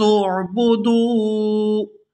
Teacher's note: آگے دال کو واو ساکن کے ساتھ ملائیں گے تو کھینچ کر ادا کریں گے کیونکہ یہ واو مدہ ہے